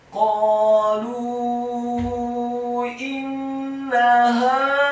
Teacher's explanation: Huruf nunnya ditasydidkan dengan gunnah atau dengung seperti mat atau panjang 2 harokat. Setelah nunnya ditasydidkan kemudian fathah 1 harokat.